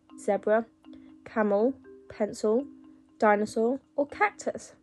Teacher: It's actually the schwa or the uh sound you found in zebra, camel, pencil, dinosaur, or cactus.